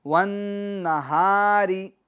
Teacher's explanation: آگے چلتے ہیں، والنہاری، والنہاری، ون میں جو نون ہے، نون مشدد، اس کو ہم گنہ کریں گے اس کے اندر، کیونکہ نون مشدد اور میم مشدد میں گنہ ہوتا ہے، گنہ ناک میں آواز لے جا کر پڑھنے کو کہتے ہیں، اور ایک الف کی مقدار ہم گنہ کریں گے، گننے کی آواز کو ناک میں ایک الف کی مقدار ہم ٹھہرا کر رکھیں گے، والنہاری۔